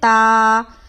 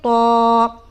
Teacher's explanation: تا کو اگر ہم موٹا پڑھیں گے تو یہ حرف طا بن جائے گا